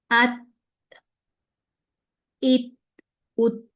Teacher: ता में साकिन हालत में आवाज को बंद किया था और सांस जारी किया था।